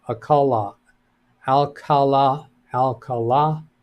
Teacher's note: pronounced Alcala with emphasis on the last syllable